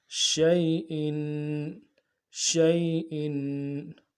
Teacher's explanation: شین یا زبر شی، شی حمزہ دو زیر ان، حمزہ کو بھی نرمی سے پڑھنا ہے اور تنوین جو ہے تنوین کو غنہ کرنا ہے اور غنے کو ایک الف مدار میں کھینچنا ہے